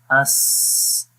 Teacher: حمزہ سین زبر اس، تو دیکھیں سانس جاری ہو رہا ہے اور آواز بھی جاری ہو رہی ہے مخرج میں